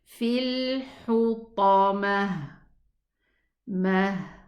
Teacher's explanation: This ta, when I stop on it, I pronounce it a ha sukun.